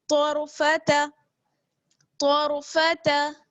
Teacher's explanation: آگے ہے طرفتا، تو کو ہم را سے ملائیں گے، تو کو پر پڑھنا ہے اور را کو بھی پر پڑھنا ہے. تو موٹا ہمیشہ پڑھا ہی جاتا ہے، اور را کے ساتھ کنڈیشن یہ ہے کہ را ساکن ہے لیکن را سے پہلے کیا ہے زبر، اس لیے را کو بھی موٹا پڑھیں گے. تو را زبر طور، تو را زبر طور، فا زبر فا طرف، تا زبر تا طرفتا طرفتا.